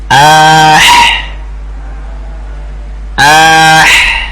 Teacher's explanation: dia itu ha yang dimaksud yaitu dari wastul halaq, tengah tenggorokan